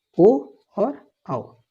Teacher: तो कंठोष्ठ की बात करें तो ये हो गए ओ और औ, ओ और औ कंठोष्ठ हो गए